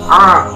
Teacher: 16 yaitu huruf ain, pelafalannya a. Makhrajul huruf ain terletak pada tenggorokan bagian tengah. Sedangkan sifatul huruf ain terdiri dari 5 sifat, yaitu jahar, nafas ditahan.